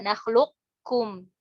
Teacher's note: qafnya ini sifat isti'lanya nih, tebalnya ini tetap ada